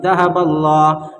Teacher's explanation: لفظ اللہ کے لام سے پہلے زبر یا پیش ہوگا تو لفظ اللہ کے لام کو پر پڑھیں گے، اور یہاں پر لفظ اللہ کے لام سے پہلے زبر، اس لیے یہ لفظ اللہ کے لام کو پر پڑھنا ہمیں۔